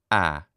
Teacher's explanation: then this open front unrounded vowel must be ah